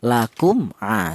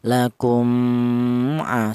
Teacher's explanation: cara bacanya tidak boleh mim mati ini disamarkan · Yang benar mim mati ini dibaca jelas atau dibaca izhar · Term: izhar syafawi